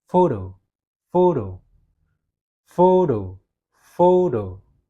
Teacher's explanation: Jadi yang lebih tekankan adalah fo ya.